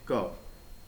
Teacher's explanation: क बोला, कम समय लिया, धीरे से हवा छोड़ी। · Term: अल्प प्राण